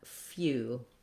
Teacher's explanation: we have a glide, a y, and an oo together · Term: U glide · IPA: /fju/